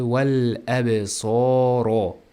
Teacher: So cho'ziladi. Sod o'zi yo'g'on va harakati ham cho'ziladi.